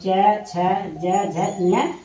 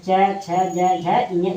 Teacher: च छ ज झ ञ हमारे तालु से बोले जाते हैं